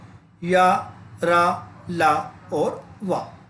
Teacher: सघोष है मतलब कि इनम कंपनी की ज्यादा जरूरत पड़ेगी और सारे के सारे अल्प प्राण है हवा कम निकलती है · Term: अंतस्थ व्यंजन